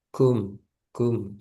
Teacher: maadukum ada hamasnya sedikit